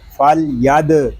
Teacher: دال ساکن میں خوب کلکلہ ظاہر کریں گے